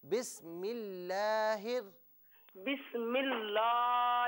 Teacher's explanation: بسم اللہ میں لفظ اللہ کی لام کو باریک پڑھنا ہے. بسم اللہ بسم اللہ نہیں، لام کو پر نہیں پڑھنا، اس کو باریک پڑھیں بالکل.